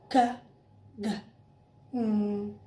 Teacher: Velar, back tongue and soft palate.